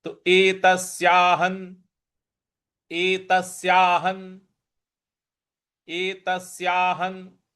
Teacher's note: ह के ऊपर जो अनुस्वार है उसके आगे न है, तो ह का अनुस्वार का उच्चारण भी हमें न ही ले आना है